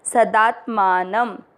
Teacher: स में मिक्स करेंगे स, दा के साथ आधा त सदात मान। शब्द पूरा होने के बाद न पे अनुस्वार आधा म